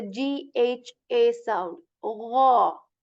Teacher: This letter is articulated from the portion of the throat that is the upper one. Okay, the portion of the throat that is near to our mouth, and there is this gargle sound when you say gha, like the GHA sound. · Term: letter ghain